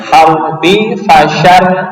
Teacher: tipis tarkik ya karena rnya berharakat kasrah